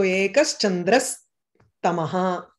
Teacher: Cha, if you have cha, you have ekas chandraha. And then ta is there, the visarga becomes sa.